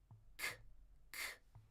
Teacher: And we kind of already mentioned h kind of we kind of already mentioned that K sound. The tongue is in the back of the throat, right? And it explodes.